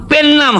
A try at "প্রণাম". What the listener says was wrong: পেন নাম নয়, কথাটা প্রণাম। একটা রফলা লাগবে।